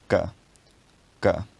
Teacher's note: On its own it would be k. It's velar because it's pronounced with the tongue drawn back to the soft palate. And it's a plosive because you store up air and then release it in a burst. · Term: voiceless velar plosive